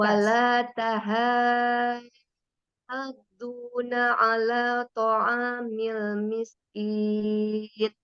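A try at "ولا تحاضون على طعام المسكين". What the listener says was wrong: yang tahanya pakai H kecil. Di Umi pakai H yang besar. Afwan, coba Umi coba H kecil sama H besar coba. H yang tipis gimana?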